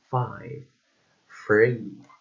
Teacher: a voiceless labiodental fricative sound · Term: voiceless labiodental and fricative